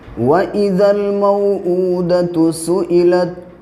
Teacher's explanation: उल्टा पेश वाव मद्दा के बराबर खींचा जाता है